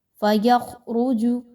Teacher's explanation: خا اور را یہ دونوں موٹے حروف ہیں، ان کو موٹا کر کے پڑھیے، باریک نہیں پڑھنا